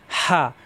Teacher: হা কণ্ঠনালীর মাঝখানে চাপ দিয়ে একালিপ টান দিতে হবে